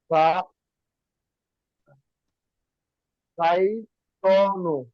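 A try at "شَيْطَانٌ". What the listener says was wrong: শাইতানুন, এই যে এখানে ডবল পেশ না, আমরা পড়ে আসছিলাম না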